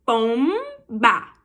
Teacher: Você fecha no M para abrir na letra B, ó. Pom, encostei os lábios, ba.